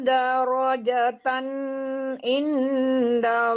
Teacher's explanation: tan enggak boleh juga tertahan soalnya di depannya huruf izhar izhar halqi ya. Tebalkan rya darjatan in.